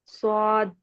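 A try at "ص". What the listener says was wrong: ये मोटा कीजिए सोद। जबान को ऊपर उठाएं और मुंह को खोलें। गोल नहीं करना है, मुंह खोलना है और ऊपर उठाएं। सोद। दाल की भी आवाज आनी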